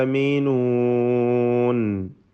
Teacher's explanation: ആമീനൂൻ മറ്റക്ഷരങ്ങൾക്ക് തഫ്ഖീം വരാതെ ശ്രദ്ധിക്കുക. ആമീനൂൻ എല്ലാം തർഖീഖിൻ്റേതാണ്.